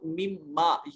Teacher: नून और मीम करीबुल मखरज इकट्ठे हुए, नून साकिन और मीम मुतहर्रक था, तो नून को मीम से मिलाकर ये मिम्मा बन गया